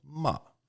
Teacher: And the fourth tone is falling, ma.